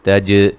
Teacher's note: جیم کو ہلا کے پڑھیں گے، ری را کو باریک پڑھا جائے گا، یہ مدہ ہے، ٹھیک ہے۔